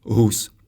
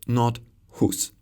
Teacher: The Czech H sounds like /ɦ/, so we say Hus, not [hus]